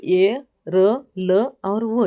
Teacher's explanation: अंतस्थ हमने देखे थे कि चार जो व्यंजन है वो अंतस्थ व्यंजन है। अंतस्थ व्यंजन यानी कि हवा बिना ज्यादा रुके सीधे अंदर से बाहर निकलती है।